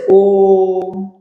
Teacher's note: यह स्वर त्रिमात्रिक है जिसका प्रयोग प्राय वेदों में होता है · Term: प्लुत स्वर